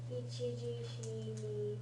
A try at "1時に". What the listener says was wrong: there's no she there. Ichiji ni. That's a G. Yeah, that's ichiji.